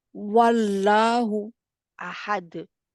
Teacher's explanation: पहले होंठ गोल से शुरू करते हैं वाव कहना, और फिर आप शुरू जी करें, पहले होंठ गोल करें अपनी वाव के लिए पहले।